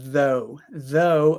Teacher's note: that's the unvoiced th sound but now we have though though again we have the voiced th sound